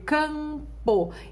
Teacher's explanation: observe que não aparece som de semivogal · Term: dígrafo vocálico